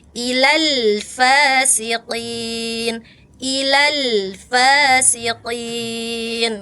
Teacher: kalau lam itu sifatnya tawas sedikit mengalir. Ngalir dikit aja.